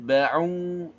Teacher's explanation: Wattaba'u, watta, jangan lupa hamasnya di ta. Kemudian ba'u, u-nya juga dibaca dua harokat